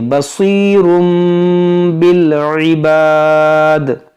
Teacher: यानी कि उसको हम मीम से बदल कर पढ़ते हैं नून साकिन और तनवीन को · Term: इक़लाब